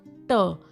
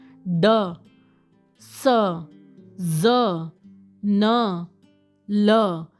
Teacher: गोलगोल है इसको बोलते हैं टीथ रिज या एल्वी होलम तो the sounds which are produced by raising the tongue टू the अल्वियोलस तो अल्वियोलस के पास जो अपर टीथ के बाहर वाला जो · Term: एलविल साउंड्स